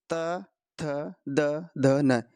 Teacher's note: त वर्ग, त वर्ग का उच्चारण स्थान होता है दंत्य। त थ द ध न, इनमें दांतों का प्रयोग होता है, जीभ दांतों से टकराती है।